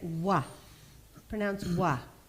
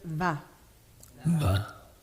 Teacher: laal letter we get W Pronounce W now say o but Sanskrit has a little bit of difference in this semivowel and that it gets a little extra it gets some teeth and pronounce va va so those are our beautiful semivowels you